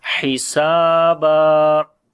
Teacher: Ha we read from the middle of the throat